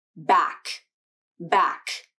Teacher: with an audible puff of air that comes out as you say the sound when the back of the tongue releases from the soft palate · For the K consonant, the airflow is stopped in the back of the mouth, and specifically at the soft palate. This is where the back of the tongue makes contact when you say the K sound.